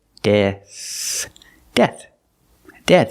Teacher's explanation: we have a th at the end making the sound with no voice just air